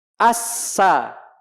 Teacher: Tipis pangkal lidah nggak naik.